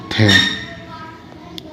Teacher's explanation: स्पर्श व्यंजन भी होता है, दंत व्यंजन भी होता है, अघोष भी होता है और महाप्राण भी होता है। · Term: स्पर्श, दंत, अघोष और महाप्राण